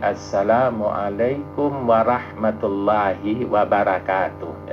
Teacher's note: Jadi, rnya tidak tafhim jadi ra bukan ro